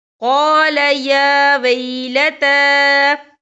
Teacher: تا کے پر کھڑی حرکات ہے اور اس پر چھوٹی سی مد بھی ہے، تو ہم یہاں 3 یا 4 حرکت کے برابر کھینچ کے پڑھیں گے۔